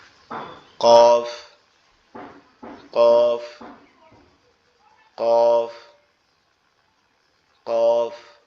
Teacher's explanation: কফটা হচ্ছে আমাদের জিহ্বার গোড়া উপরের তালুর সঙ্গে লাগবে, জিহ্বার গোড়া উপরের তালুর সঙ্গে লাগবে, লেগে এরকম উচ্চারণ হবে।